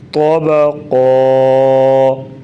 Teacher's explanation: تو طا موٹے حروف میں سے اس لیے اس کو موٹا پڑھیں گے